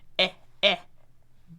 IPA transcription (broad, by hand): ɛ